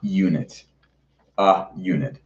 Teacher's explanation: the word, starts with a y sound, not with an uh sound